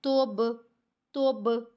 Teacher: اس کو ہم نے لائٹ سا قلقلہ کرنا ہے، تھوڑا سا اس کی آواز کو ہلانا ہے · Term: قلقلہ صغیرہ